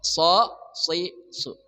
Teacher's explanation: sad dari ujung lidah bersama gigi seri bawah.